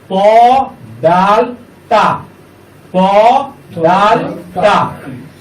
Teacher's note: জিহ্বার আগা সামনের উপরের 2 দাঁতের গোড়ার সাথে লাগাইয়া শক্ত করে